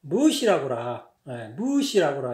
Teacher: 이거는 굉장히 높낮이는 별로 없는데 장단이 굉장히 길어요. 길게 모음이 늘어질 때는 길게 늘어지고 강할 때는 길게 늘어지고 짧을 때는 조금 짧아지긴 하는데 그래도 길어요.